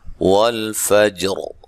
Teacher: را کو موٹا ادا کریں گے وقف کی صورت میں